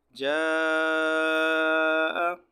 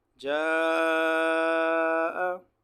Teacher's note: اس مد کو 4 الف کے برابر یا 3 الف کے برابر کھینچنا واجب ہے. اور آپ کو بتایا کہ 3 الف یا 4 الف کی مقدار معلوم کرنے کا آسان طریقہ یہ ہے کہ آپ 4 کھلی ہوئی انگلی کو نمبر سے بند کرتے جائیں، یا 4 بند انگلیوں کو نمبر سے کھولتے جائیں.